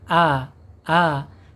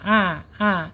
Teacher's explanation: Kalau hamzah ada di bawah tenggorokan a a. Tetapi kalau ain ada di tengah tenggorokan